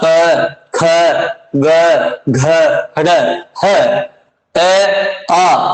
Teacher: क ख ग घ ड़ ह ए आ और विसर्ग का उच्चारण स्थान हमेशा किससे होता है? कंठ से होता है। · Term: कंठे वर्ण